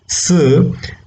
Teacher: For example, when you say where the s sound, s, when you say the word s, the tip of the tongue is almost touching the teeth ridge